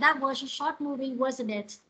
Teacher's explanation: thì nó sẽ là ngữ điệu đi xuống và mình nghĩa là mình hỏi nhưng mà mình biết câu trả lời rồi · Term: câu hỏi đuôi